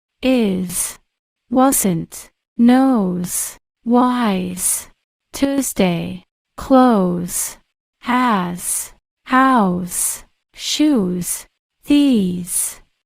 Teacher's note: In standard English, when the S follows a vowel sound, it can make the Z. sound.